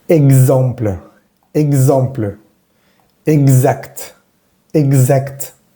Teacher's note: la X entre vocales va a vibrar, sobre todo cuando la siguiente es una E. Pero bueno, simplemente haz de cuenta que suena como más o menos en español, pero trata de hacerla vibrar.